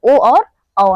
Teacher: कंठ प्लस ओष्ठ से उच्चारित होने वाले ओ और औ हैं।